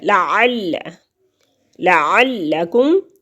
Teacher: عین حلق کے درمیانی حصے سے ادا ہوتا ہے